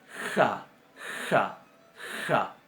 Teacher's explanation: la kaf va a sonar como nuestra J, pronunciada un poquito más adelante en la garganta, no pronunciada atrás como pronunciamos estas · se va a articular delante del velo y casi cerca del paladar duro